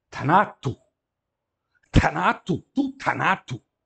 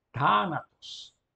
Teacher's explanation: Aqui, no nominativo, que é o caso do sujeito, nós temos uma palavra proparoxítona, mas a mesma palavra no genitivo, indicando o adjunto nominal, ela já muda de acento, já fica paroxítona, o acento na penúltima sílaba